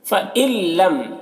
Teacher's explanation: فَإِن لَّمْ، یہ حمزہ کو لام سے ملا کر پڑھیں گے کیونکہ یہاں پر نون ساکن کے بعد حروف یرملون میں سے لام ہے، تو نون کو لام سے ملا کر بغیر غنہ کے پڑھیں گے، اس کو ادغام تام کہتے ہیں۔